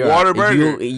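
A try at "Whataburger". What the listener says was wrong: You're not pronouncing the R when you're pronouncing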